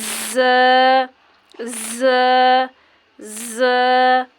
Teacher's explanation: ز جو ہے سختی سے پڑھا جائے گا سیٹی کے ساتھ